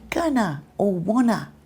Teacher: instead of saying to, we might say t or the sound might completely disappear and you might say gonna or wanna. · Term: reduced